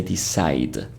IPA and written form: dɪˈsaɪd (decide)